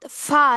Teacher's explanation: ফা হবে হলো নিচের ঠোটের সাথে উপরের দাঁত